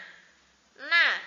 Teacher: Kita rasakan lidah kita berada di langit-langit bagian depan